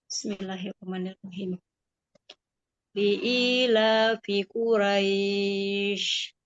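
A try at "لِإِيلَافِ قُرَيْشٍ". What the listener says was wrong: Iya, bagus.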